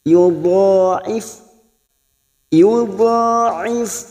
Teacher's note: ditahan selama tig harakatu has huruf d yang memiliki sifat istiqala makhrajnya ada pada tepi lidah nempel pada gigi Graham atas bisa kiri bisa kanan Yud D biasanya lebih mudahnya di kiri yudif yudif ha W